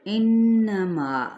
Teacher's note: نون پہ غنہ کرتے ہوئے یعنی ناک میں وائبریشن ہوگی، ناک کے بانسے میں